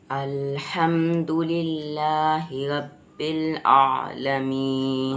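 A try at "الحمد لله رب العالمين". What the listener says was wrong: रा को हेवी करो, रब्बिल इस रा को हम हेवी करेंगे क्योंकि वही पहले वाला है कि रा पर ज़बर है।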